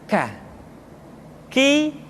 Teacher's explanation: diucapkan dengan mengangkat pangkal lidah kita ke posisi di depan huruf qaf kah diucapkan dengan mengalirkan nafas kita kah qwords terdengar ada suara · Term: huruf k